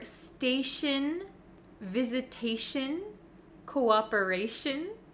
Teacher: any word almost that ends in t i o n we actually pronounce it as Shin Shin